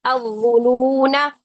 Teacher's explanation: وصل کی صورت میں الظنون الف نہیں پڑھیں گے